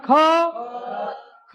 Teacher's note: ज्या वर्णाचा उच्चार करत असतानी हाकाराचे प्रबल्य जास्त जाणवते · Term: महाप्राण